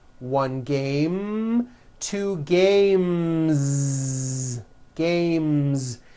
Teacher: the last sound you hear in the word game is the M sound hmm which is a voiced consonant so because of that when you add an S the S